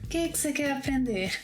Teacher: First of all, ‘o que’ can be reduced to ‘que’. ‘Você’ mat be reduced to ‘cê’. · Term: word linking